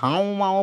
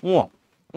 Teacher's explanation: গুলা ম যখন উচ্চারণ করো দেখো তোমার ওইরকম চন্দ্রবিন্দু চলে আসতেছে দেখো তোমার ওই যে নাক দিয়ে বাতাসটা বের হইতেছে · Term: নাসিক্য